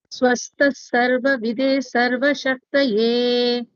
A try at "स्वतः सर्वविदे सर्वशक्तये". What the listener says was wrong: It's not swastha, it is swatah. Swatah sarva vidhe sarva shaktaye.